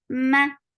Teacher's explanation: this is gunna, and fatha is very short. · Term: akmal gunna